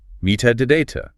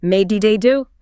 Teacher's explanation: They will hear what sounds like soft D's. The tongue simply flaps against the alveolar ridge behind the top teeth rather than stopping the air completely. It sounds like may di da do. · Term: American flap T